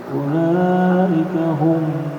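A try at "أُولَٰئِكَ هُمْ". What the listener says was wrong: Nah, dengung enggak humnya? Enggak boleh ya, karena bukan mim dan ba.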